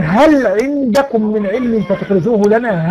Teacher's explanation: اما مثلا ايه قل هل عندكم من علم فتخرجوه لنا، هل عندكم ادي لام هل ووقع بعد العين حكم الاظهار